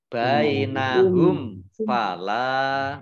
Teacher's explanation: Mim sukun bertemu dengan huruf fa, bacaan idhar safawi, dibaca jelas.